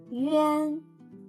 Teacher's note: pronounce the U first then quickly slide to the an the mouth shape should be smaller than an then put your finger on the nose to feel the vibration